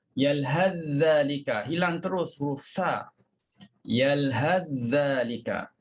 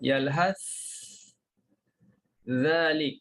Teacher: Tapi Hisham dia baca dengan izhar. Bermakna kita kena letakkan lidah kita pada huruf sa. Yalhas, letak pada sa dulu.